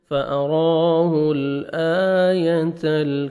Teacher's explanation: إِلَىٰ رَبِّكَ فَتَخْشَىٰ فَأَرَاهُ الْآيَةَ الْكُبْرَىٰ، را کو مرکھڑ زبر ہے، را کو موٹا بھی کرنا ہے اور 1 سیکنڈ کھینچنا ہے